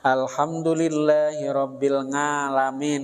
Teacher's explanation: di daerah Jawa itu ada ketika mengucapkan ain dengan nga.